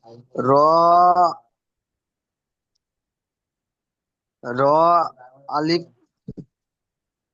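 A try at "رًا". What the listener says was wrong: আলিফটা বাদ বাদ হয়ে যাবে, পড়া হবে না। দুজাবারের যখন পড়া হয় তানবিনের, সব আলিফ লেখা থাকে বলেছিলাম, দুজাবার, দুজে দুপেশকে তানবিন বলে। আর দুজাবারের প্রতিটা পড়ার উপর আলিফ লেখা থাকে, এগুলো পড়া হয় না, লেখা থাকবে, পড়া হবে না, এটাও পড়া হবে না।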